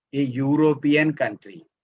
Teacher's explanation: but the sound is consonant Y sound